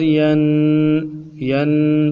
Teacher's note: ین تنوین کا مخرج ہے کہ غنہ کے ساتھ پڑھنا ہے، اور اس غنے کو ایک الف کی مقدار میں کھینچنا ہے